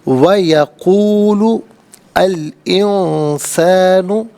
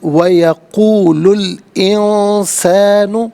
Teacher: یقول میں لام پر پیش ہے، اسے الانسان کے لام ساکن کے ساتھ ملائیں گے، درمیان میں سے الف یعنی حمزہ کو حذف کیا جائے گا